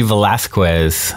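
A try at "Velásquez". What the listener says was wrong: You usually don't pronounce the U. Velasquez.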